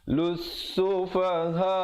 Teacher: disitu ada lam syamsiah dalamnya tidak dibunyikan